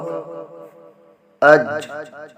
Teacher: تو جیم کا مخرج معلوم ہو گیا۔ زبان کا بیچ اور اوپر کا تالو